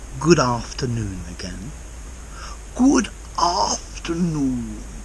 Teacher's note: But he separates them. And he puts a bit of extra stress on the D at the end of good.